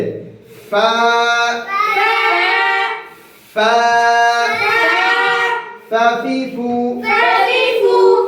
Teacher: এই ফা উচ্চারণ করার সময় বাতাস জারি থাকবে, আওয়াজ বন্ধ থাকবে। · এই দুই দাঁতের আগে এবং নিচে ঠোঁটের পেট।